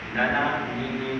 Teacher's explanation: kalau orang Melayu sebut huruf n huruf huruf n tak gunakan hidung hanya menggunakan lidah dia nana ni nun tapi kalau huruf nun kena guna hujung